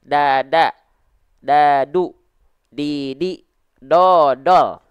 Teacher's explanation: kalau huruf D itu biasanya ujung lidah kita nempel ke langit-langit saja